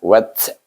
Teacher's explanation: Hamzah wasal ada dengan huruf ta. Jadi, ta ni huruf hamas. Wat. Bunyinya ada angin bunyinya